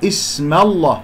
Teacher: اسم ميم مفتوحة قبل اسم الجلال الله، إذن اللام تفخم. اسم الله، لا أقول اسم الله، لا أفخم الميم لأنها جاورت اسم الجلال الله المفخم.